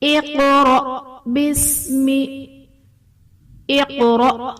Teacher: اقرأ باسم اقرأ، قاف حرف مستعلیہ پر پڑھا جائے گا اور قاف حرف قلقلہ ساکن ہے تو یہاں پر قلقلہ خوب ظاہر کریں گے، اور حمزہ ساکنہ ہے تو یہاں پر جھٹکا دے کر پڑھیں گے